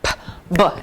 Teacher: we clip the sound p, b, and the mouth cards have helped with that because it's a puff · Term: Lip puffer